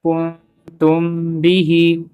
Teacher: یہاں پہ ہو رہا ہے اخفاء شفوی، ہم میم کو چھپا رہے ہیں